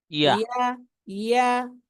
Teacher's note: ইয়ার আওয়াজটা নরম হবে, কিন্তু আওয়াজটা চালু থাকতে হবে। ইয়া ইয়া বললে আওয়াজটা মাঝখানে বন্ধ হয়ে যায়, এটা বন্ধ হওয়া যাবে না, পুরো আওয়াজটা সমান থাকতে হবে এবং আওয়াজটা চালু থাকতে হবে।